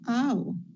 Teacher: In the case of ow, you have the tongue moving from the middle to the back of the mouth.